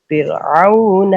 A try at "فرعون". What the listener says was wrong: آپ نے یہ فرعون کی راہ کو پیچھے ذو العرش کی راہ کو بھی پر نہیں کیا، تو فرعون کی راہ کو بھی پر نہیں کیا. اس کو پر کرنا تھا، اس کو پر کرنا تھا فرعون کو. ہاں ذو العرش کو تو ٹھیک ہے آپ نے پر کرنا چاہیے، نہیں کیا، لیکن فرعون کو کیوں پر کیا ہے آپ؟